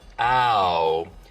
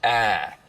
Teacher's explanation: smoothing is when you take a diphthong, like ow, and smooth it out so it's just one sound, ah.